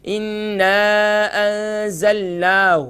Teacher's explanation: اب یہاں ہم کیا کرتے ہیں، ہا کو اب نون کو ہم نے کھینچنا ہے، کھڑی زبر ہے، لیکن ہم وہاں شارٹ ساؤنڈ کر دیتے ہیں، اور ہا کو ہم کہتے ہیں اِنَّا أَنزَلْنَاهُ. ہو نہیں، اگر ہو ہو جائے گا تو ہا کے بعد ایک حرف کا اضافہ ہو جائے گا اور وہ واو ہے